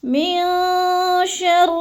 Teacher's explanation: نون ساکن کے بعد شین آ گیا ہے، تو ادھر ہم نے اخفا کرنا ہے، آواز کو ناک میں چھپا کر پڑھنا ہے